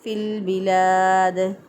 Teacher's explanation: اب یہاں پر فا کو لام کے ساتھ ملا دیا، لام ال جو ہے یہاں پر اس کا اظہار ہوا ہے، لام ال کو ظاہر کر کے پڑھیں گے کیونکہ اس کے بعد حروف قمریہ میں سے با آ گیا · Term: اظہار قمری